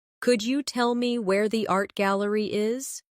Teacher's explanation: In connected speech, could you becomes could ya.